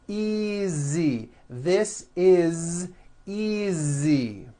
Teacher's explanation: Again, the S is like a voiced Z.